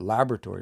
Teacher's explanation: it's the fourth last syllable that I'm putting the stress on that word